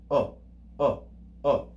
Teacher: we read it with the classical O sound, but short duration, short time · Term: Omicron